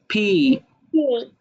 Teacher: দুই ঠোঁট একসাথে হয়ে তারপর ছেড়ে দিবা